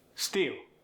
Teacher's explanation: The L is going to soften to a W. For instance, if I say steal, it becomes steal.